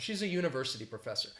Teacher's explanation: I tend to use a and just say that schwa sound.